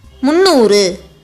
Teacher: Mu, a short sound letter, ind, a consonant. When joining with noor, the dh sound of the consonant becomes silent and it becomes munnoor.